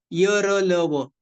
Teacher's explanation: slight touch होता है पूरा टच नहीं होता